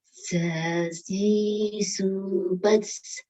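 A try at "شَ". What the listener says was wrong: Kurang mundur, Bu. Suaranya lidahnya kurang mundur. Iya, agak ketarik ke belakang. Beda sama sin.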